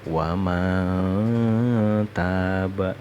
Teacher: Di sini ada contoh nun sukun. Nun sukun bertemu huruf ta. Dalam ilmu tajwid itu namanya ikhfa hakiki. Bacanya harus dengung.